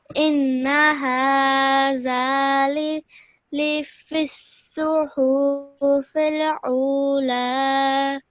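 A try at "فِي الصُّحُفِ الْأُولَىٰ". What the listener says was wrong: Make sure not to stretch the hu out for too long. Simple hufil ula. Over here, this is a simple alif with the dhamma. So, u. Okay, and a vaw madda. Ula. Alright, so what you're doing over here, I heard an ayn sound again.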